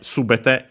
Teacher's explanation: subete is accented on the first mora, high, low, low